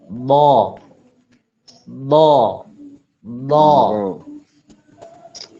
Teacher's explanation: Pertama, lidah itu lidah dari sini lah ya, dari sisi lidah itu semuanya digigit sama gigi geraham, atas sama bawah, gini semua. Nah, ujung lidahnya itu pas ada di gigi belakang, gigi atas bagian belakang, pas di situ. Ya, itu lurus saja, ditempelkan saja, tidak boleh ditekan, tidak boleh tidak dilengkungkan.